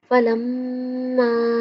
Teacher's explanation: میم شدت پہ غنہ کریں گے